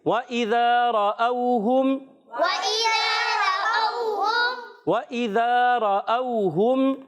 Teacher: واو کی ادائیگی ہونٹوں کی گولائی سے حمزہ خوب واضح کریں گے. ذال الف زبر ذا، اس کو ذال کو زا سے نہیں بدلیں گے، ذال کی ادائیگی کلیئر رکھیں گے.